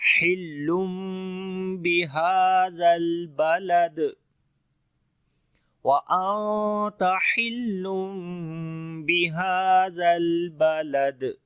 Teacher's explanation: دال کے اوپر پھر قلقلہ ہوگا جو کہ تھوڑا سٹرونگ قلقلہ ہوگا